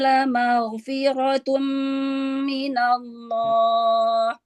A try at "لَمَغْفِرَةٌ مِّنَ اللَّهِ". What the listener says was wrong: Ya, huruf ghoin angkat lagi pangkal lidahnya biar tebal. La maghfi. Maghfi. La maghfiratum.